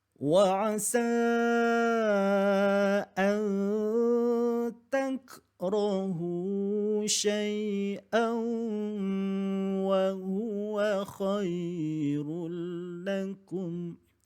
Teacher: waktu nak menyebutkan tanwin kena campur dengan huruf waw tu, kemudian kena buat di hidung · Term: dengung